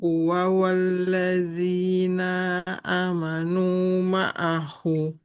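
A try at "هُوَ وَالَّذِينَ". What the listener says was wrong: Huwa walladzina. nunnya fathah. Nah, nunnya fathah tidak bertemu alif. Nggak boleh panjang ya.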